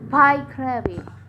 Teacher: The stress placed on the third syllables from the last one.